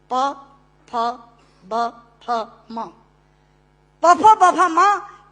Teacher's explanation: दोनों होंठ मिलाकर बोले जा सकते हैं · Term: ओष्ठांग